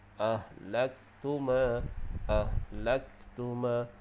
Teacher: Jadi kaf di sini kita tak perlu tekankan terlalu kuat sehingga menjadi qalqalah. Sebab kaf bukan huruf qalqalah, cuma kita bagi dia berangin sedikit.